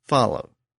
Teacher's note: The W sound at the end has really become silent over the years, but that letter W still represents a sound that was once pronounced, and it was originally pronounced as a G sound.